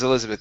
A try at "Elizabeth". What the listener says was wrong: Yeah, because you were saying Elizabeth. Try that one more time with the short I. Elizabeth.